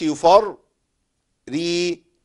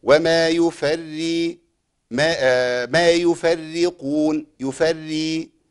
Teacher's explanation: الراء الاولى تتبع الثانية تفخيما وترقيقا